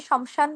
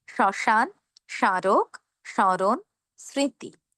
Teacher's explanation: শব্দের শুরুতে মফলা থাকার কারণে আমরা মফলার উচ্চারণ করবো না। আমরা উচ্চারণ করব শ্মশান।